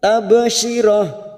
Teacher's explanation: Ba sukun qalqalah sugro. Kita pantulkan